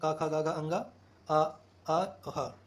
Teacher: क वर्ग में कंठ से बोला जाता है।